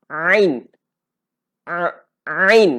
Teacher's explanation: Jadi huruf ain ni abang-abang kakak, kita kena, yang pertama kita dapatkan dahulu dia punya nama tu supaya kita tak bunyi ain. Dia ada bunyi sekatan dahulu sebelum kita nak lontar.